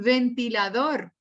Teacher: el ventilador tiene el acento en la última